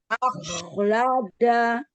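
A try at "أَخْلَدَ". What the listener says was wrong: Iya, jadi jangan akhlad ada u-nya. Akhlada. Coba ulang.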